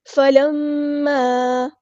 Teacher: میم پہ غنہ زمانی ہو رہا ہے، ایک الف کے برابر رکیں گے، ناک میں آواز گنگنی کر کے رکے گی